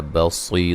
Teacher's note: صاد کو موٹا ادا کریں گے اور صیہ مدہ ہے